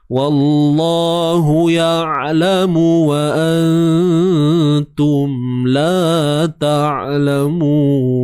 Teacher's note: Wallah, kalimah Allah sebelumnya baris atas. Jadi kena tebalkan.